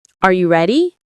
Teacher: when a native speaker asks a yes or no question like, Are you ready? the pitch of their voice goes up at the end.